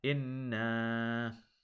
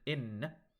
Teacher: This word right here, inna, if you just pronounce it in, because noon fatha alif sukun, you have to hold that to 2 counts. If you just say in, you are omitting this alif sukun from this word, and that is an example of a major mistake.